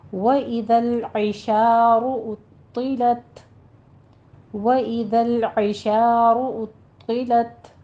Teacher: ادا کرتے ہوئے اوپر ضمہ ہے، ہونٹوں کو گول کیجیے، اور طا پر تشدید بھی ہے، سختی بھی کرنی ہے، اور طا کو پر بھی پڑھنا ہے